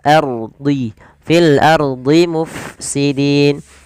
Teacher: rnya tebal karena didahului dengan huruf berharakat fathah. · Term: ro tafkhim